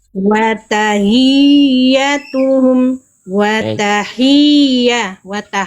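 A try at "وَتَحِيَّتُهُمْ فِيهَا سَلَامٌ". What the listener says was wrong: Hnya tadi sempat kayak H besar, tapi yang ini sudah bagus.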